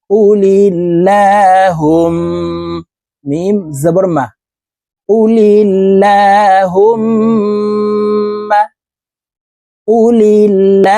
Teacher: তাশদি হইলে সর্ব অবস্থায় নাকের বাঁশি থেকে গুন্নাহ করিয়া পড়িতে হয় গুন্নাটি তিন সেকেন্ড পরিমাণ ধরে রাখতে হবে এই হা তাসদিদলা মিমকে তিন সেকেন্ড পরিমাণ ধরে রাখবো দেখুন এভাবে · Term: ওয়াজিব গুন্নাহ